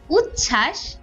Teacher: ব ফলা যুক্ত ব্যঞ্জন বর্ণের সঙ্গে যুক্ত হলে তার উচ্চারণ হয় না যেমন উচ্ছ্বাস এই ছ এর নিচে একটা ব থাকে এই বটার